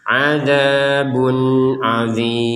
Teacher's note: ada tanwin adzabun, kemudian bertemu dengan ain, dibaca dengan jelas